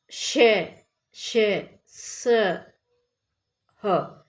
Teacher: जिन वर्णों के उच्चारण में मुख से निकलने वाली वायु ऊष्मा उत्पन्न करती है, घर्षण जैसा लगता है, उन्हें ऊष्म व्यंजन कहते हैं।